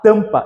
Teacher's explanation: esse M que está aqui, ele nada mais é que um indicativo de nasalização